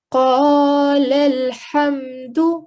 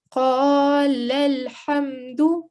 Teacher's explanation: So we joined these two lams together, and we eliminated any blank letters in between. So these two alifs didn't really contribute towards anything. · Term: rule of wasl